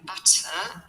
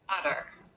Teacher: pronounce the full T sound which is of course explosive